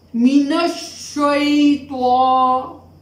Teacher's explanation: We will pronounce it as not lengthening voice and quickly.